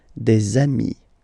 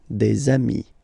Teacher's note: And if you make the liaison, so the link between the two, you will get des amis